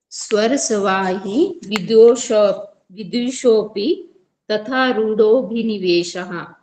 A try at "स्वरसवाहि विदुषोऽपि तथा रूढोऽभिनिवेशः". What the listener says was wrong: Good. वेशः नहीं वेश है।